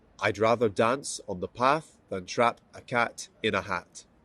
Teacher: In Scottish English, there is usually no difference in the vowel sounds a and r, such as in words like cat, trap, hat, and path, rather, and dance, the same vowel. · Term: trap path difference